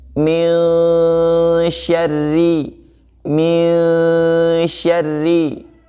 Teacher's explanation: Hukum nun mati atau tanwin bertemu dengan huruf sya ya, bertemu dengan huruf sya, maka di situ dihukumi ikhfa ya, maka dibaca samar ya dengan menyamarkan huruf nunnya ya dengan huruf shin ya.